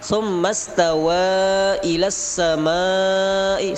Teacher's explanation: samai mad wajib 5 harakat